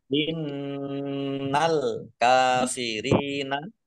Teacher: Nun tasdid dibaca gunah atau dibaca mendengung ditahan dua harakat